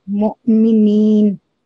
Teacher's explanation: We will this is called Hufi Madda. We will pronounce it like mu'minin. We will prolong for 2 seconds.